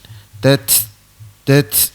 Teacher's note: Huruf ta mati tu dia keluar angin, ya, dia terlepas angin. Dia bukan terlepas makhraj.